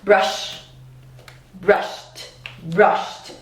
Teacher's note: I add that t sound. T is also voiceless, right?